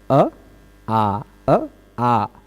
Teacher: अ बोलने में कम मुह खुलता है आ बोलने में थोड़ा सा ज्यादा खुल जाता है है ना यद्यपि इन दोनों का उच्चारण स्थान एकक है कंठ